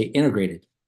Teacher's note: I'm noticing a trend in the way that T is pronounced in words, and the T is becoming silent. And so they kept saying, like, in words like integrated, people don't pronounce the T, they say integrated, right?